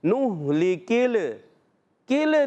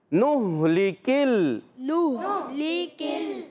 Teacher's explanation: لام قلقلہ والا حرف تو نہیں ہے نا، تو قلقلہ نہیں کریں گے. ٹھیک ہے، تو آواز آئے گی نہلکل.